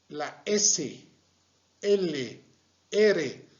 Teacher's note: dentales luego tenemos las lingua alveolar es la s l ere la punta de la lengua se está dirigiendo a la parte anterior del paladar